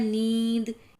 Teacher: नींद में नाक और मुंह से हवा निकल रही है